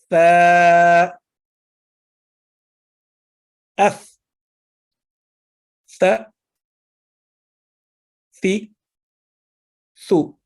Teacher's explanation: जबान की नोक जो है मामूली सी बाहर आएगी अगले दांतों के किनारों से टकराती हुई।